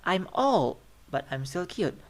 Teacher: So old is rise, right? Is rising intonation.